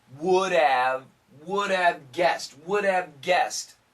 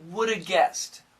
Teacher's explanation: when they're in the middle of a sentence the H sound is usually cancelled